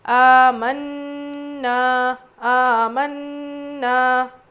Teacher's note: نون پہ تجدید ہے، غنہ کر کے پڑھیں گے۔ آ کو جتنا کھینچ رہے نا کو بھی اتنا ہی کھینچیں گے۔